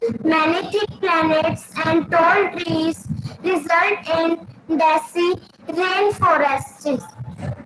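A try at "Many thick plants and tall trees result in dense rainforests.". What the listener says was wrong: बेटे pronunciation check करो. Planets नहीं है, plants. Many thick plants and tall trees result in dense forest. Dense in dense forest. Dense rainforest.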